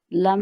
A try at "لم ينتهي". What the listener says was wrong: لم لمبا نہیں کرنا.